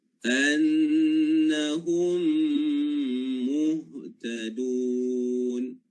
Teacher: Mim mati bertemu dengan huruf mim. Idgham ma'al gunnah.